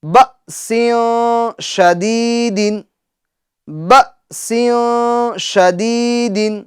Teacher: حمزہ ساکنہ کو ہم جھٹکا دے کر پڑھیں گے